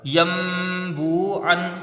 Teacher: बा को वाव में मिलाएंगे। वाव साकिन से पहले पेश है वाव मद्दा है। एक अलिफ की मुदार इसको खींच कर पढ़ा जाएगा। ऐन के ऊपर दो ज़बर की तनवीन है और ये अलिफ नहीं पढ़ा जाएगा। · واو ساکن سے پہلے پیش ہے، واو مدہ ہے، ایک الف کی مقدار اس کو کھینچ کے پڑھا جائے گا